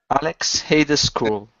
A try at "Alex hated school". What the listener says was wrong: Okay. Very nice.